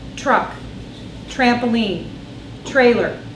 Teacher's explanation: Well, TR makes a CH sound.